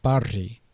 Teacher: The voiced fricative trill was found in words like barji